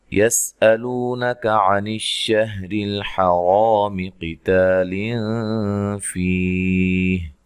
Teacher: سین کو باریک سیٹی سے ادا کرنا ہے، ہلانا نہیں ہے